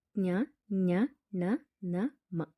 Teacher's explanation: ಕೇಳಿಸುವುದಿಲ್ಲ ಯಾಕಂದ್ರೆ ಮೂಗನ್ನು ಮುಚ್ಚಿದಾಗ ಉಸಿರು ಮೂಗಿನ ಮೂಲಕ ಆಚೆ ಹೋಗುವುದಿಲ್ಲ ಆದ್ದರಿಂದ ಇವುಗಳು ಯಾವಾಗಲೂ ಮೂಗಿನ ಸಹಾಯದಿಂದಲೇ ನಾವು ಈ ಅಕ್ಷರಗಳನ್ನ ಉಚ್ಚಾರ ಮಾಡಬೇಕಾಗುತ್ತೆ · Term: ಅನುನಾಸಿಕಗಳು